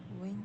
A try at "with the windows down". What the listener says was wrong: not with the windows down, down like that, because whenever the tone of the voice goes up, it indicates that the sentence is not yet finished. Of course, if it's a question, then you know, tone of your voice can go up. But for this one, it usually goes down.